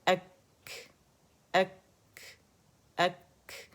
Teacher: کاف کی جگہ سے آواز آنی چاہیے، ٹھیک ہے، تھروٹ میں سے نہیں آنی چاہیے